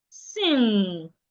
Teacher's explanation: This sound is articulated with your nose. So we call it a nasal sound.